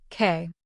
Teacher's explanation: open your mouth a little and put your tongue toward the back of your throat then release the air without using your voice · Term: k sound